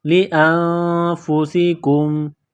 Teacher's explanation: وَمَا تُقَدِّمُوا لِأَنفُسِكُمْ، حمزہ کو نون کے ساتھ ملانا ہے، پلس کرنا ہے، نون ساکن کے بعد فا ہے، حروف اخفا ہے تو نون ساکن پر غنہ کریں گے